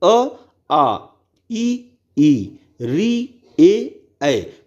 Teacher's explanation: हमारे जो जो है होठ का जो आकार है वह कैसा बन रहा है गोलाकार नहीं बन रहा है